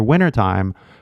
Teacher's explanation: it's not even a glottal stop. I didn't say the T. It's gone. It disappears, right? So now you have a way to take notes and remember the sound more than anything.